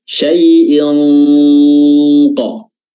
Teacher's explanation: Sifat isti'la, sifat tebal.